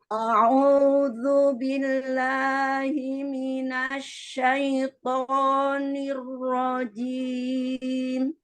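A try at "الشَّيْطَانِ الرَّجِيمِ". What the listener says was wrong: Ya, syaito, to-nya tebalkan lagi. Dan syaito, to, syaitonir rajim.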